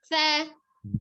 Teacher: sa-nya ada di ujung lidah, ada di ujung gigi seri atas